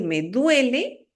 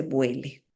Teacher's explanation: En lugar de decirme duele, me dice vuele, que está cambiando un sonido dental, que es la D, por un sonido labial, que es la B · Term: labialización de dentales